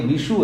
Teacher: विशु में जो शकार है वो मूर्धन्य शकार है